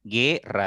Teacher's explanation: Si ustedes pronuncian guerra, directo suena la E. Entonces, al sonar directo la E, la U pasa desapercibida y no hay un diptongo